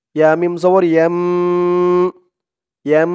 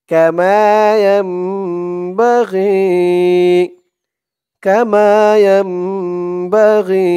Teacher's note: কারণ নুন সাকিনের পরে যদি বা হরফ থাকে, তখন সেই নুন সাকিনকে ছোট্ট একটা মিম দ্বারা পরিবর্তন করে পড়তে হয়। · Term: ইকলাব গুণনা